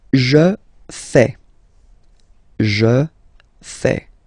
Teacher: Remember, final S not pronounced.